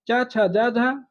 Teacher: चा, छा, जा, झा स्पर्श संघर्षी ध्वनि कहलाती हैं